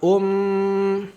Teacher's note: mim tasdid ditahan dua harakat